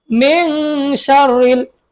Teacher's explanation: মিন সার র লাম জের রিল মিন গোপন করছি কেন কারণ নুন সাকিনের পরে শিন আছে শিন টা কিসের হরফ ইকফার হরফ এজন্য গোপন করছি